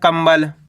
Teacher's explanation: जैसे कि यहाँ पे देखो का के ऊपर अनुस्वार की मात्रा है, इसके बाद वाला अक्षर बा, ये रहा बा, तो यहाँ पे आधा माँ पड़ जाएगा